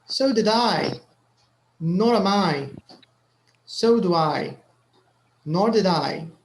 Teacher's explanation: so the middle auxiliary is not stressed